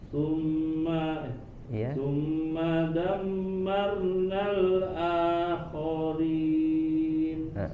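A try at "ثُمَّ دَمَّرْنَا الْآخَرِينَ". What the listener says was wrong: Ro-nya sedikit dilatih, tebalkan suaranya.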